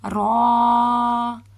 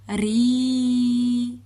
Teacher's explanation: را کھڑا زبر را، را کھڑا زیر ری، را الٹا پیش رو، را ری رو. را کو را پڑھتے وقت پر کریں گے، ری پڑھتے وقت ہم اسے باریک پڑھیں گے